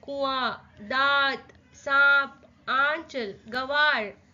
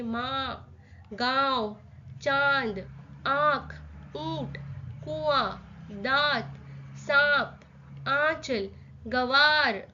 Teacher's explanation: नाक और मुंह दोनों का इस्तेमाल हो रहा है। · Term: अनुनासिक